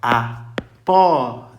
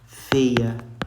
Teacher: O ditongo aberto, pessoal, o som dele é som de acento agudo